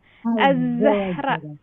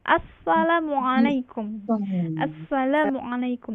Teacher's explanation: kalau huruf zai ini dia desisannya tajam